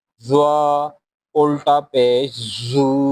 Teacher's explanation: زبان کی نوک اوپر والی دانتوں کی بیک سائڈ پر لگائیں گے